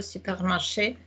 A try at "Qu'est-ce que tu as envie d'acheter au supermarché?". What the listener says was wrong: Softer D, qu'est-ce que tu as envie d'acheter au supermarché?